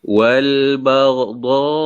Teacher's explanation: Dha tu wajib dipanjangkan. 4 ataupun 5 harakat. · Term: Mad wajib muttasil